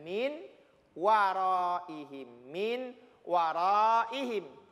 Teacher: [Musik] secara tulisan dibaca minwa tulisannya Min waroh ihimin warohim tapi karena dia berlaku idgham maka bunyi Nun sukunnya dileburkan ke huruf wow terkesan hilang huruf nun-nya